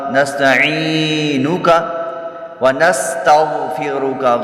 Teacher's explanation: نستعینک ونستغفرک غین پر پڑھی جائے گی اور را بھی پر ہوگی